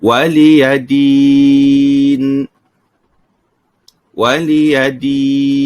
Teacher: Baik, di sini di hujung ayat apabila kita waqafkan, kita panjangkan dengan kadar panjang 4 harakat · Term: mad arid disukun